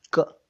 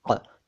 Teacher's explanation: क जब बोलते हैं तो वो हलक के अंदर से थोड़ा उच्चारण होता है और क जो है वो मुंह के अंदर अगले भाग से होता है।